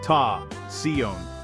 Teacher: Break it into 2 sounds, ta and sion. Ta is pronounced ta, with an open a like in father.